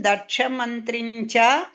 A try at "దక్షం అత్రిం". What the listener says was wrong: ఇక్కడ దక్ష మంత్రి కాదండి, దక్షం అత్రిం. అంటే ఇద్దరు మంత్రి కాదు, మంత్రి లేదు అక్కడ. దక్షం అత్రిం, మరీచి దక్షుడు అత్రి, ఆ ముగ్గురు పేర్లు అక్కడ. మరీచిం దక్షం అత్రిం అలా వస్తుంది. అత్రిం అని వస్తుంది.